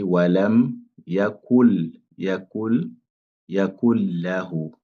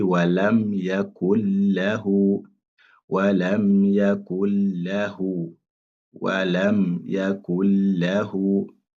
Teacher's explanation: Donc ça montre que la lettre nun, on ne doit pas prononcer ça.